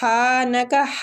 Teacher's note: ہا جو ہے یہ وسط الحلق سے ادا ہوگا، کھڑی زبر کی وجہ سے اس کو کھینچنا بھی ہے ایک الف